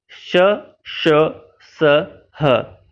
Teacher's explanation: इनके उच्चारण करते समय मुख के अंदर से कुछ अधिक गर्म सांस निकलती है। आप जब इसे बोलेंगे, जब आप श, श, स, ह को बोलेंगे तो आप हाथ लगा करके महसूस कर सकते हैं कि हम जब इन्हें बोलते हैं तो हमारे मुख से गर्म सांसें निकलती है, इसलिए इन्हें ऊष्म व्यंजन कहा जाता है।